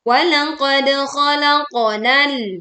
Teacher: qaf sukun dipantulkan dengan suara yang tebal